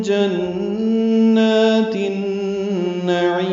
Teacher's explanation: تا کو النعیم کے نون سے ملا دیں گے، ادغام شمسی ہے اس لیے الف لام نہیں پڑھا جائے گا اور غنہ ہوگا. جنات النعیم نون کو لمبا نہیں کرنا، عین کو لمبا کرنا، اور میم ساکن پہ اظہار ہوگا، اظہار شفوی وقفاً. · ربهم میم ساکن پہ اظہار شفوی ہے، جنات میں نون مشدد پہ غنہ ہے، اور نون کو 2 حرکات لمبا کرنا ہے. تا کو النعیم کے نون سے ملا دیں گے، ادغام شمسی ہے اس لیے الف لام نہیں پڑھا جائے گا اور غنہ ہوگا.